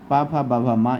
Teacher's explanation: इसका उच्चारण स्थान ओष्ठ से रहता है। जब हमारे दोनों ओष्ठ आपस में मिलते हैं तब इस वर्ग के वर्णों का उच्चारण होता है।